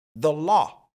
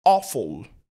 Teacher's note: Dans un premier temps, le Aw ne se prononce pas A ou A mais plutôt O.